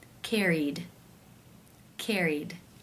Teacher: the final sound in the infinitive is the e as in she vowel sound